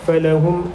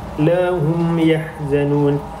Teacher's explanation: dengan waw, dan kalimah lahum yahzanun mim mati berjumpa dengan ya, merupakan hukum izhar syafawi dan perlu dibaca dengan jelas dan tidak perlu didengungkan